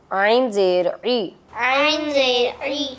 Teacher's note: عین جو ہے وہ حلق کے مڈ والے حصے سے ادا ہوتے ہیں